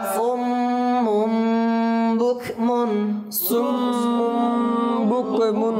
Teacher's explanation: এখানে দুইটা গুন্না, একটা ইকলাবের গুন্না আর একটা মিমে মুশাদ্দাদের গুন্না